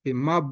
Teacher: Nah, di sini ada huruf yang sifatnya qalqalah. Huruf ba mati, sukun dipantulkan.